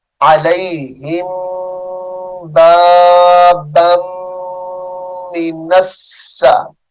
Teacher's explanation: یہاں پر غور کریں، علیہم کی میم ساکن ہے، اور میم ساکن کے بعد جب بھی حرف با آتا ہے تو غنہ ہوتا ہے، تو یہاں پر بھی غنہ کریں گے.